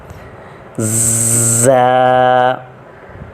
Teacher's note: اوپر پیراگراف میں ہم نے پڑھا ہے، لاسٹ پوائنٹ تھا، 3 حروف حروف صفیریہ کہلاتے ہیں: زا، سین اور صاد۔ زا کو پڑھنے کا طریقہ یہ ہوگا کہ شروع میں ہمارے دانت بند رہیں گے جس کی وجہ سے تیز سیٹی کی طرح آواز نکلے گی، بعد میں پھر دانت اوپن ہو جائیں گے۔